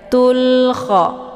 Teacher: alif lamnya dibunyikan secara jelas atau jelas bunyi L-nya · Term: alif lam al-qamariyah